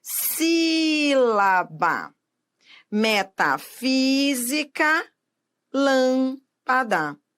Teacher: Por fim, as proparoxítonas. A sílaba tônica é a antepenúltima sílaba da palavra.